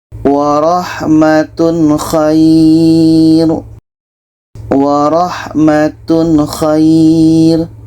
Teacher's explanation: Tanwin jelas, kha jelas, dan tidak ada dengung. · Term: izhar halki